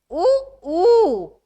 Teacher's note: पश्च माने उ का उच्चारण मुंह के पीछे वाले भाग से होता है।